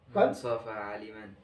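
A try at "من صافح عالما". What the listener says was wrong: হ্যাঁ, এভাবে একটু টাইনে বলতে হবে, নাহলে মান সাফাহা আলেমান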